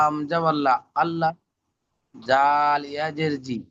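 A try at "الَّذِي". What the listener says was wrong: ইয়াজের জি হয় না, জাল ইয়াজের জি টান দিয়ে বলতে হয়?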